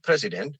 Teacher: And then that's why if somebody says something president, we say, okay, president, because that it's pronounced, the first syllable is accented